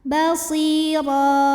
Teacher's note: Basira, ra mad iwad sebab ada baris tanwin fathah yang diwaqafkan. Cara bacanya baris tanwin fathah ini jadi fathah dan kita panjangkan 2 harokat.